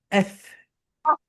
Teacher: নিচের ঠোঁট উপরের দাঁত দিয়ে, অর্থাৎ উপরের দাঁত নিচের ঠোঁটের সঙ্গে টাচ করবে,